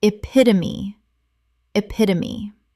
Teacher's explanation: Four syllables. The E at the end is always pronounced.